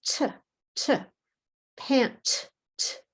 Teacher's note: pant, the t sound, there's no vibrate. So in the plural, it is also no vibrate.